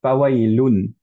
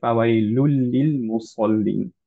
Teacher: কিন্তু এখন নুন, লুনের যে নুন সুকুনটা ছিল সেইটার পরে যেহেতু একটা লাম আসলো, এর জন্য নুনটাকে আমরা বাদ দিয়ে দিলাম, আমরা এখন লামের সাথে সাদ্দা করে ফেললাম। এর জন্য আমরা পড়ছি হচ্ছে ফাওয়াইলুল লিল মুসাল্লিন, রাইট? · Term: ইদগাম